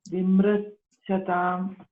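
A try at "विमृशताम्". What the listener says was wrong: So it is, you said it as Vimritasham. It is Vimrishatam.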